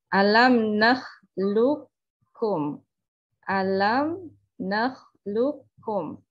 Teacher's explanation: Jadi tidak dibaca qalqalah lagi sebagai salah satu sifat dari huruf qaf. Alam nakhluqukum, ya, tidak dibaca alam nakhluqukum. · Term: idgham mutaqaribain